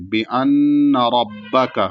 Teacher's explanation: رَبَّكَ میں را پر زبر ہے اس لیے موٹا پڑھا جائے گا، اور کاف کو نہیں کھینچیں گے، اس کو بھی جلدی پڑھیں گے۔